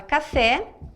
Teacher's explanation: tem a última sílaba tônica, ela pode ser acentuada ou não, mas ela tem a última sílaba tônica. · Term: oxítona